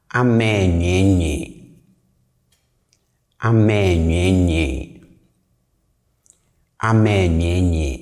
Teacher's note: And as you can hear, I'm not pronouncing the re. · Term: glide over the re